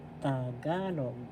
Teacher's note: First syllable ta. Second syllable ka. Third syllable log. The accent is in the second syllable.